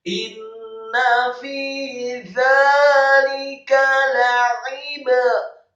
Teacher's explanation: Inna fi dzalika la'ibratan, lamnya dibaca tipis fathah satu harokat, kemudian ainnya ditekankan keluar dari tenggorokan, kasroh satu harokat, kemudian ba-nya la'ib, ba-nya dibaca sukun, dan ba yang sukun wajib untuk diqalqalahkan atau dipantulkan.